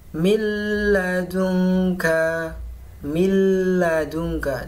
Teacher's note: Bacaan yang dibaca idgham bilagunnah masuk tanpa dengung · lebur, tidak dengan dengung